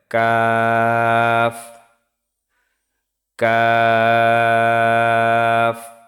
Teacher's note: তো কাফের উচ্চারণ হচ্ছে জিহ্বার গোড়া থেকে একটু আগে বাড়িয়ে তার বরাবর উপরের তালুর সঙ্গে লাগিয়ে উচ্চারিত হয় কাফ